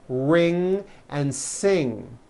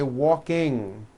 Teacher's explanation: Ing comes out of your nose. It's a combination of an N and a G, and it is found at the ends of words like ring and sing. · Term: NG sound